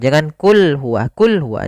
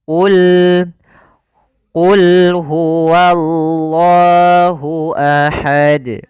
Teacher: Qul, qafnya tebal. Ini hati-hati, jangan terbaca dengan kaf.